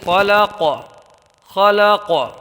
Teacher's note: قاف حروف قلقلہ میں سے ہے، تو یہاں پر قلقلہ ہوگا یعنی آواز لوٹ کے نکلے گی